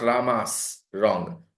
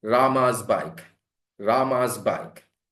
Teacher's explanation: Rama, Rama, Rama, vowel. Vowel is voiced. So that becomes z.